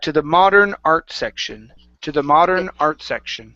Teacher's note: pull your tongue off the back of your teeth for that D in modern